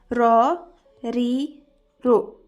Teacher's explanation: Bu harf til uchi biroz til yuzasiga kirib, yuqori old tishlar milkidan pastroq joydan chiqadi. Ya'ni soddaroq qilib tushuntiradigan bo'lsam, o'zimizning o'zbek tilidagi r bilan deyarli bir xil bo'ladi. · Nima uchun ustida fatha kelganda ra deb emas, ro deb o'qilyapti? Chunki ro harfi yo'g'on harf hisoblanadi. Yo'g'on harf nima deydigan bo'lsangiz, arab tilida shunday harflar borki, uning ustida fatha kelsa, a deb emas, o deb o'qiladi.